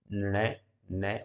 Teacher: इनके उच्चारण में श्वास वायु नाक से होकर निकलती है, जिससे ध्वनि का जो है नासिकीकरण हो जाता है। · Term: नासिकी व्यंजन